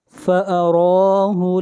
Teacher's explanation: را کو موٹا پڑھیں گے اور را کو کھینچ کر پڑھیں گے، را کے اوپر کھڑی زبر ہے